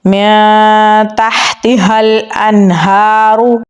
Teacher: نون ساکن کے بعد ہا ہے تو یہاں پر ہم اظہار کر کے پڑھیں گے